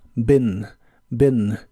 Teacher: La doble E se pronuncia como una I corta.